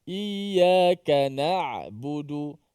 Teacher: Ain ni tengah-tengah antara suaranya tertahan pada makhraj dan antara suara terlepas pada makhraj.